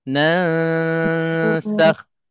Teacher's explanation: Belum habis lagi 2 harakat dengung tu, kita dah tersengih untuk nak sebut huruf sin. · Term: ikhfa